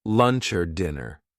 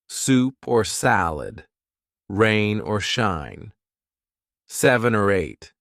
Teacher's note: or would be connected to the word before it and it will sound like lunch or dinner the or now sounds like er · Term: linked